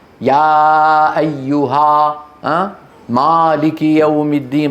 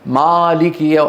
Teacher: فتح العربي فتح وسط، فتح وسط، يعني لا هو فتح كبير